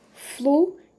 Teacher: a gente tem duas vogais aí que vão ficar em sílabas diferentes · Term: hiato